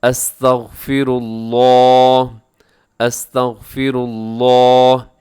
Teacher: جی، استغفر اللہ میں یہ ہے کہ اپنے لفظ اللہ کو موٹا پڑھنا ہے اور باقی اس کی ادائیگی کیسے آپ نے کرنی ہے، استغفر اللہ، اس میں غین بھی موٹا ہے، اس کے بعد جو را ہے، را کے اوپر پیش ہے، تو آپ نے اس کو بھی پر پڑھنا ہے